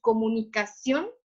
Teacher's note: cuando decimos comunicación suena más fuerte acción y termina en n por lo tanto cumple con la regla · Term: sílaba tónica